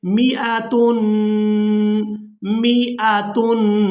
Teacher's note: کر ادا نہیں کرنا، بغیر کھینچے ادا کریں گے، میاتن میاتن، نہ تو حمزہ کو یہاں پر کھینچ کر ادا کریں گے اور نہ ہی میم کو